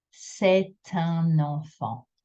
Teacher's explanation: C'est un will become c'est un. Un enfant will have an N sound. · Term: la liaison